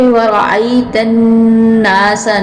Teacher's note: یہاں پہ وَرَأَيْتَ النَّاسَ، نون کے اوپر سختی کے ساتھ اس کو ادا کریں گے اور غنہ بھی ادا کریں گے